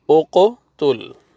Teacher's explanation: جب یہ ساکن یہاں پہ ان کے اوپر سکون ہوتا ہے، جزم ہوتی ہے تو ڈبل آواز آئے گا، ان کا ڈبل ساؤنڈ آئے گا، تو یہاں پہ قلقلہ ہوئے گا۔ حمزہ پیش قوف جزم اوقو، تا پیش لام جزم تل، اوقو تل۔